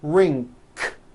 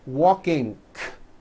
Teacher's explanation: Some people who speak English as a second language have gotten into the bad habit of adding a K release sound, k, k, like that, after an NG ending. For example, in the word ring, it becomes ring, k.